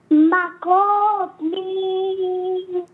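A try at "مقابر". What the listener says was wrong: Now, without stretching, but Maqabir.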